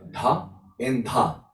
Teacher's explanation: So we have dha and dha. So the retroflex and the dental.